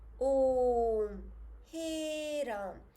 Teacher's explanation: प्लुत स्वर, जिनको बोलने में और भी ज़्यादा समय लगता है